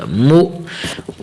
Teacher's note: مو تھوڑا سا جھٹکے کے ساتھ حمزے کی آواز نکالنی ہے. مو صاد زبر صا یہاں صاد کو ہمیشہ موٹا کرنا ہے.